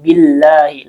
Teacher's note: Allah di sini lafzul jalalah dan dibaca dengan tarkik karena sebelumnya ada harokat kasroh yaitu bi dan alif lamnya syamsiyah, makanya dibaca dengan idgham billahi langsung ke huruf lam.